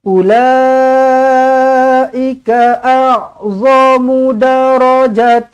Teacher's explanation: Ulaika a'zamu darajatan من الذين أنفقوا من بعد وقاتلوا أولئك dibaca dengan panjang di sini mad wajib muttasil 4 ataupun 5 harakat